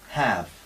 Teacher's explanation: a española abierta grande amplia Clara have y no es así Esta es entre a y e